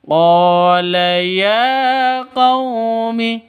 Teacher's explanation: Jadi sama-sama mad asli. Qumi sifat lin lentur lemas ya. Tidak boleh dipanjangkan